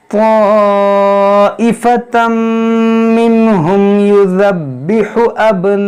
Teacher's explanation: हा को भी वस्ते हल्क से अदा करें